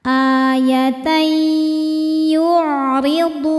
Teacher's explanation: Ada hukum idgham bi gunnah karena ada tanwin fathah menghadapi huruf ya. Cara bacanya tanwin dileburkan ke ya disertai dengungan.